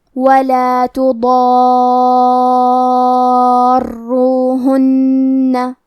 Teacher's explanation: یہ مد لازم کلمہ مثقل ہے، تو ہم اس مد میں اپنی آواز 6 مد کے برابر لمبی کریں گے اور حرف را کے تشدید کو ظاہر کریں گے اور را کو 2 حرف کے برابر پڑھیں گے. اور کیونکہ تشدید پیش کا ہے تو ہمیں حرف را کو موٹی آواز میں بھی پڑھنا ہے.